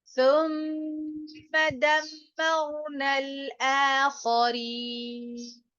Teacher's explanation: ये note note फरमा लीजिए, यहाँ पर तुम में मीम के ऊपर जो जबर है, आगे कोई सबब मद्दा मौजूद नहीं है, इस वजह से मीम को बढ़ा के नहीं आपने पढ़ना है। ये सुम्मा दमर नहीं है, सुम्मा।